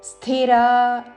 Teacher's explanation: సాకి మహాప్రాణాక్షము ధావత్తుతో స్థిరా, రా దీర్ఘము